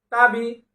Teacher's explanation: আইন জবর আ তাবি আ তা জিহ্বার লাগায় সোজা ভিতরে লাগবে বা দুই ঠোঁটের ভিজা অংশে বি নিচের দিকে চাপ